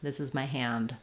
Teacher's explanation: I am releasing that D or hand this is my hand I might finish that D sound release it because it's in a consonant cluster same thing with something like old old if I use a